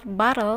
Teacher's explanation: you can feel the sides of the tongue lower to let out the air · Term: lateral